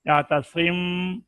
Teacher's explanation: آواز کو ناک میں لے گئے، 1 الف کی مقدار میں غنہ پورا کیا، اور پھر ہونٹوں کے کھلنے سے پہلے ہی تری والے حصے کو مضبوطی کے ساتھ ملا کر با کو ادا کرنا ہے. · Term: اخفاء شفوی